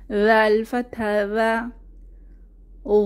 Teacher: জাল জিহবার আগা দাঁতের আগা নরম আওয়াজ।